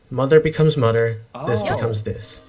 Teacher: Dropping the TH sounds in words. Mother becomes mutter, this becomes this.